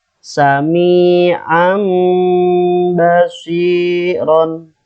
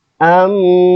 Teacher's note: Tanwinnya diganti menjadi mim dan ditahan sekitar 2 atau 3 harokat. · Rumusnya, apabila ada nun sukun atau tanwin bertemu dengan huruf ba, ya, huruf iklab hanya ada satu, gampang ingat, yaitu hanya ba. Cara membacanya mengganti nun sukun dengan mim sukun dan disertai gunnah. Ya, nun sukun atau tanwinnya diganti menjadi mim dan disertai gunnah 2 sampai 3 harokat.